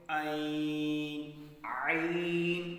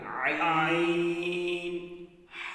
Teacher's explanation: حلق کے درمیان میں زور لگے گا آپ کا، جہاں سے ہڈی ابھر رہی ہے